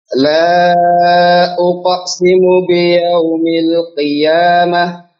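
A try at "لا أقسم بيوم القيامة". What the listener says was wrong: Untuk qafnya jangan diputus ya.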